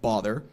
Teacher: our rounded lot pronunciation has been retained in words like bother